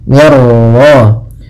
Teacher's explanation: Idgham tanpa disertai dengan gunnah, berarti hanya idghamnya saja. Idgham itu memasukkan, maka masukkan nun ke ra sehingga suara nunnya hilang. Yang di sini idghamnya idgham kamil.